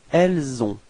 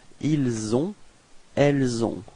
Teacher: this liaison, this link, is actually quite soft. It's not really strong, and it's especially important for this last part, ils ont and elles ont, because if you make it stronger and too strong, it would sound like ils sont, and in this case, be careful because it's the verb être, to be.